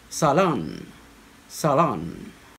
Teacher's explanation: on the first syllable salon solemn with a different vowel sound the americans would stress it on the second syllable